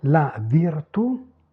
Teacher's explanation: En position finale pas d'allongement vocalique